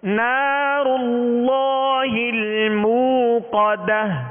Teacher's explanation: اس میں جلالت اللہ عز و جل کے لام کو پر کریں گے، اس میں تفخیم ہوگی یعنی موٹا پڑھیں گے